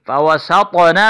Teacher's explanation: زبر فا، واو زبر وا، فا وا، سین طا زبر ساطو، طا پر قلقلہ ہے، اس کو موٹا پڑھیں گے